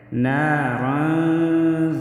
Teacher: نا الف مد ہے، 1 الف کے برابر کھینچ کر پڑھیں گے۔ رن، را کو موٹا پڑھیں گے۔